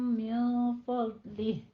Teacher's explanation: ٹھیک ہے، آگے نون ساکن کا قاعدہ اخفا حقیقی ہے اور فضلہ میں ضاد کو پر پڑھنا ہے